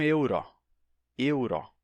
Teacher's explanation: Mas eles não dizem euro, eles dizem euro, euro. Então, a primeira sílaba é tônica, mas a segunda é aberta, o O é aberto